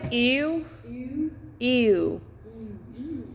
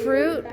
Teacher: Not fruit, because fruit is just an oo. It's like ew, because that's a diphthong into the W.